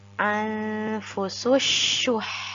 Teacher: Nah, di sini kita harus membedakan antara sin dan shin. Nah, huruf H-nya juga harus kita baca dengan benar-benar mengeluarkan angin.